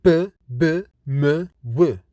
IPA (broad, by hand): p,b, m,w